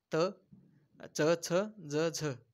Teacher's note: दाता आणि आपल्या टाळूला जेव्हा स्पर्श होतो, जेव्हा ते अक्षरे उच्चारली जातात तेव्हा त्याला आपण दंततालव्य व्यंजने म्हणतात.